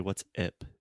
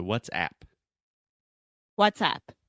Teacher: that is a very open a sound where it's just the same sound as like apple cat hat disaster master